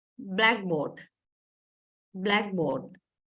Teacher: So black primary stress, board secondary stress, if you take it as one word.